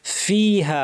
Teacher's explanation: ফা বলার সময় যেন আমাদের প্রচুর আওয়াজ এবং বাতাস থাকে